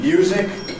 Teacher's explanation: most consonants can form a cluster with a yod (/j/), as /m/ and /j/ in ‘music’ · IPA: /ˈmjuːzɪk/